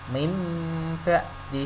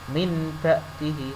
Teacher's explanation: Tulisannya non mati, tetapi bacanya nanti diganti mim mati. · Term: iklab